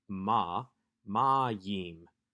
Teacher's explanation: this is not herik yod mem this is yod heric mem we have the accent on the penultimate syllable the second to last syllable